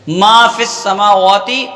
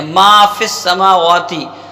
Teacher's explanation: تو میم پر بھی زبر ہے اور الف ہے تو الف کو بھی ایک الف کے برابر کھینچ کے پڑھتے ہیں